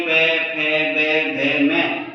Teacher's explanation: प, फ, ब, भ, म का उच्चारण करने पर हमारे दोनों ओष्ठ आपस में चिपक जाते हैं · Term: प वर्गीय व्यंजनों